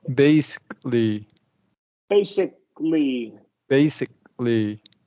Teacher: Stop on the K and then go right into the L, right? Don't add anything there.